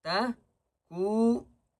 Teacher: نون کو تین الف کی مقدار کھینچ کر پڑھیں گے